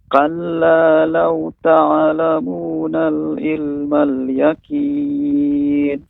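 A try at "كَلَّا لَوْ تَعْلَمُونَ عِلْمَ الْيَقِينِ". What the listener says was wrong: Nah, ilma tidak ada alif lamnya Bapak. Jadi pengucapannya ta'lamuna ilmal. Namun huruf qafnya Bapak masih yakin seperti huruf kaf.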